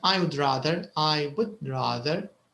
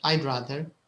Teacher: There's no w sound.